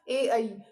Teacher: ये जो स्वर हैं हमारे, ये किससे बोले जाते हैं? कंठ और तालु से बोले जाते हैं। ठीक है, कंठ से बोले जाएंगे और तालु से, दोनों से मिलके बोले जाएंगे। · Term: ए और ऐ